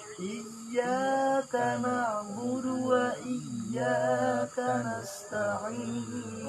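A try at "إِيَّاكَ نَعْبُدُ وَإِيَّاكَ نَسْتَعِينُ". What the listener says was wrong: Oke, bagus.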